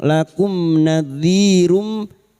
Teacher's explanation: mim sukun ketemu nun, idzhar syafawi, mim sukun dibaca jelas tanpa bersenandung.